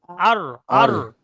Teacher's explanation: জিভের আগার উল্টো পিঠ এবং তার বরাবর উপরে তালুর সাথে লাগিয়ে উচ্চারিত হয় র